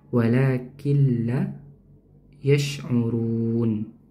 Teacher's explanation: Tapi karena bertemu dengan huruf la lam maka nunnya dileburkan atau dimasukkan ya diidghamkan disertai dengan dengung atau tidak ya tidak disertai dengan dengung karena bertemu dengan huruf lam.